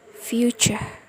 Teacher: so the T sound becomes Ch sound